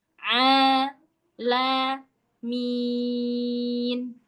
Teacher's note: di huruf ain tadi tenggorokan bagian tengah tekan plongin. A la min. Min, min itu enggak boleh kita yang di hidung terus ming.